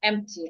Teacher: There is no H there. So we should not hear the H sound.